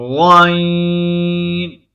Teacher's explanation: زبان کی جڑ کو تالو کی طرف بلند کرتے ہوئے موٹی آواز میں غائن کو ادا کریں گے